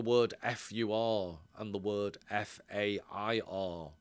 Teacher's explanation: if you think of the word FUR and the word FAIR, in my experience, Scousers struggle to pronounce those words in a distinguishable way